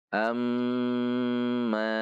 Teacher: Alif fathah masuk ke mim tasdid am ada gunah dua harakat Mim m fathah bertemu Alif Mad Thobi'i dua harakat